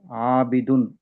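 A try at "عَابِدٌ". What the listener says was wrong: కొంచెం దీర్ఘం తీయండి. ఆబిదున్.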